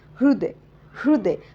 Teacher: करीन आहे जेव्हा उच्चार करतो तर कसा करणार आहे हृदय हृदय हलकासा ह अगोदर त्याच्यानंतर र येणार आणि त्याच्यानंतर त्याचा स्वर येणार